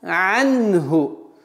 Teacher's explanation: После удлинительного агна анху нужно немножко надавить на гортанный звук айн, чтобы полноценно произнести анху. Анху ма в размере двух огласовок.